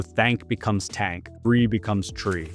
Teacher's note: Most often the voiceless th gets replaced with a t sound.